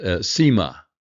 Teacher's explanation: The perfect form of seem is sema, which accents the first syllable.